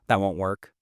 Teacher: A flat, low tone can sound dismissive, like, that won't work.